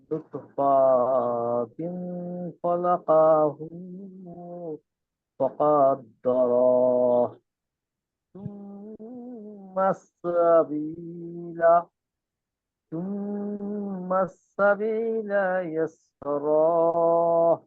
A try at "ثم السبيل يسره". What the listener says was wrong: টান দিয়েন না, শেষে কোনো টান নাই।